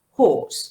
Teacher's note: As it is a long sound, the ra is not pronounced.